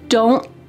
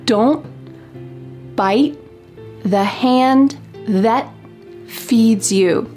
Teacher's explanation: My tongue is at the top of my mouth trying to make that T shape, but there's no puff of air that comes out. Listen carefully as I say this, and I want you to hear that stopped T.